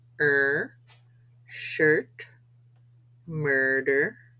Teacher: a vowel mixed with an R sound